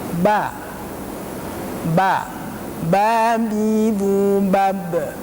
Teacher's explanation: huruf ba keluarnya dari dua bibir sebelah dalam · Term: syafatain